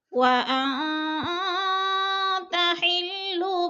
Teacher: لا اقسم بهذا البلد، بهذا البلد، لا اقسم بهذا البلد وانت حل، وان پہ اخفا ہو رہا ہے، نون ساکن کے بعد تا حروف اخفا میں سے ہے تو اخفا کریں گے، ناک میں آواز کو چھپا کر پڑھیں گے